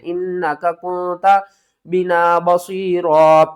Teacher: اِنَّا نون مشدد ہے، غنہ آپ نے ہمیشہ کرنا ہے